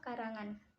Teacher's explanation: Dibentuk dengan menempelkan belakang lidah pada langit-langit lunak dan udara kemudian dilepas melalui hidung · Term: nasal velar bersuara